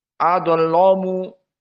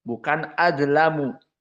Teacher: lam dibaca dalam keadaan ataglid istilahnya lam almughalladah